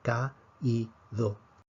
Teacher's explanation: Tomemos la palabra Caído, la fuerza cae sobre la I. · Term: acento de hiato